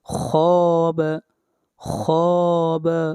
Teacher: خا کو لمبا کریں گے، ایک الف کے برابر، مد اصلی ہے